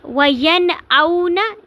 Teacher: اگر نون ساکن یا تنوین کے بعد حروف حلقی حمزہ ہا، عین ہا، غین ہا ان میں سے کوئی حرف آ جائے تو نون کو اچھی طرح ظاہر کر کے پڑھیں گے اور غنہ نہیں کریں گے، یعنی کہ آواز کو ناک میں نہیں لے کر جائیں گے بلکہ نون کو ظاہر کر کے پڑھیں گے۔ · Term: اظہار